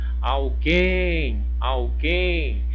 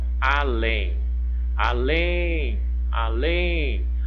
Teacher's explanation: uma palavrinha de duas sílabas e a sílaba mais forte é a última Então ela é o que uma oxítona terminou em em tenho